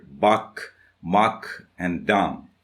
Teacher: In Chaucer's time, and that means in the Middle English, the pronunciation was about buck, muck, and dam. That is, the A sound was pronounced ah